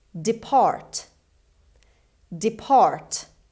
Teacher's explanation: the stress is on the second syllable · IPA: /dɪˈpɑːrt/